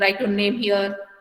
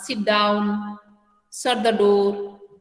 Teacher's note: जब हम लोग किसी को कमांड देते हैं एट दैट टाइम क्या होता है, ये जो वॉइस है ये फॉल होता है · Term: फॉलिंग टोन